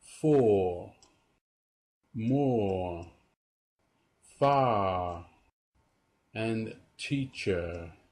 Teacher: Words that end with R. Unlike the British R, the American R is always pronounced. It's never silent. Pay particular attention to R when it appears at the end of a word.